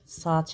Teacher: A-nın biri düşür, digəri uzanır.